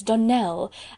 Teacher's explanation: surely the correct pronunciation of our name is donnell accent on the last syllable